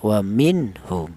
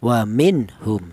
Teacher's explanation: Izhar itu artinya jelas bahwa nun mati ini dibaca jelas ya.